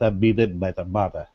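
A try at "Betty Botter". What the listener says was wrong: The only thing you need to work on is your R's were a little weak. it's Betty, Botter, Botta, Bitta, Butter. But yeah, so you really want to make sure that on the words that do have R's, it's Botter, Butter, Bitter.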